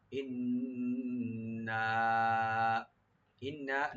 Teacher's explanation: ইন্না ইন্না নুন মুসাদ্দাদ, এখানে ওয়াজিব গুণনা করবেন আর 3 আলিফ টানবেন। এখানে মধ্যে মুনফাসিল হয়ে গেছে, 3 আলিফ পর্যন্ত টানা যাবে।